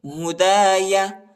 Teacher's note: ہدا، فمن تبع، فمن تبع، اخفا، فمن تبع ہدایا، ہدایا، الف کو بھی پڑھیں گے، ٹھیک ہے، ہدایا، یا کو نہیں کھینچنا ہے